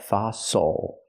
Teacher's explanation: The stress is on the first syllable. The second syllable is not stressed, so it's o like muscle and castle.